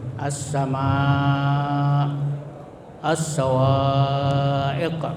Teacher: Bacanya harus dipanjangkan sampai 2,5 alif atau 2,5 kali panjang mad tabi'i. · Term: mad wajib muttasil